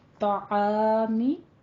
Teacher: طا کو پر پڑھنا ہے، عین کو وسط حلق سے ادا کرنا ہے